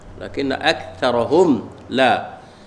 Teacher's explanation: atas nun ada syaddah wajib al-ghunnah, wajib dengung